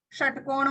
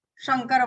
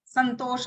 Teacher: मूर्धन्य श षटकोण वाला, तालव्य श शंकर वाला और दंत्य स संतोष वाला, समुद्र वाला, 3 प्रकार के सकार संस्कृत में होते हैं।